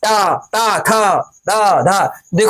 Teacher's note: ट वर्ण में ट त थ द धो दांत एक दूसरे जिभ्या मेरी दांतों को स्पर्श करती है